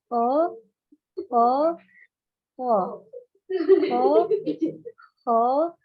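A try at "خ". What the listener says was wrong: Masih gini. Kho, kho. Kalau slow motionnya kho gitu. Tapi sedikit. Kho, kho, kho. Kho, kho, kho. Karena sifatnya tadi ngalir, ada hamesnya, jadi harus ada suara kotornya.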